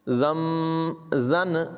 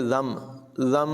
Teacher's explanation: نون کی آواز یہاں پر نہیں ہوگی بلکہ میم کو پڑھا جائے گا